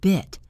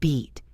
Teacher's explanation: Beat. The vowel sound in bit is short. Your mouth is relaxed. Bit. The vowel sound in beat is long. Your smile is wider.